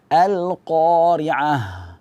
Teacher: ha itu ketika dia wakaf maka dia harus ada suaranya jangan kita wakafkan dengan angin saja biasanya sering terbaca dengan alqoriah alqoriah angin saja tidak ada suara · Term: haut tnis